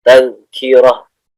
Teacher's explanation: ini ada tamarbutoh namanya di sini. Jadi dibaca disukunkan itu menjadi ha ya.